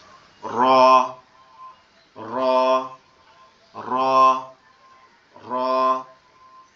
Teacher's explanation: তো এই যে রটা আমরা দেখতে পাচ্ছি, রটার উচ্চারণটা আপনার আমাদের জিহ্বা উল্টা পিঠ, অর্থাৎ জিহ্বাটা একটু উল্টায়ে উপরের সাথে লাগবে, জিহ্বার উল্টা অংশটা লেগে একটু ভাইব্রেট মতো আওয়াজ হবে, মানে একটু কম্পন আওয়াজ দিয়ে,